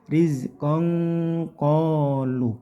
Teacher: tanwin bertemu qof ini namanya ikhfa ikhfanya qof itu ng